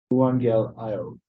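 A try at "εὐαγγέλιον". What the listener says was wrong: That's an in at the end. You're making the mistakes like I used to make of thinking that it's like, oh, it's a V, but no, it's not.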